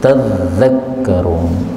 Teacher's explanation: Ayat 27 bagian terakhir zalnya boleh ditasydid tadzakkarun